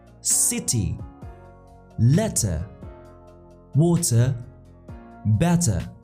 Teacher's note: in British it is clearly pronounced as T · in American accent the T changes into a soft D we call it flap T between two vowels